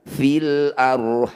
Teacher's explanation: Cara bacanya ha panjangkan 6 harokat. Huruf yang terakhir sukunkan. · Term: mad arid lis sukun